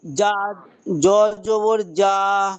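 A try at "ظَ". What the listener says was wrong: জ নয়, যা জবর যা।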